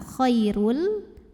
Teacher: bilagunnah karena ada tanwin lemah yang bertemu dengan huruf lam maka tanwinnya masuk ke lam Khairul tanpa didengungkan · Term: idgham bilagunnah, idgham bila gunnah